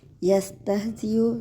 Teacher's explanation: سین ہمز کے حروف ہیں، ایسے پڑھیں گے کہ ہوا خارج ہو، سین کے بعد ہ کی آواز آئے۔